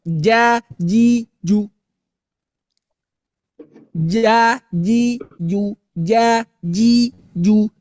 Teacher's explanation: huruf jim keluar dari tengah lidah sama Bu dengan langit-langit. Artinya ujung lidah masih simpan di belakang gigi seri bawah.